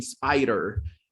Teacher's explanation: And it is a D, but it's flapped